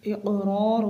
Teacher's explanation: یہاں پر قلقلہ ہوگا کاف میں